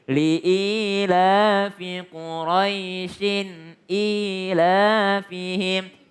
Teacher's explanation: kalau disambung dia nggak panjang karena dia sekedar huruf lin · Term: mad lin